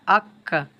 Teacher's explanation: গোড়া থেকে একটু আগে বাড়িয়ে তার বরাবর উপরের তালুর সঙ্গে লাগিয়ে উচ্চারণ হয় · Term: কাফ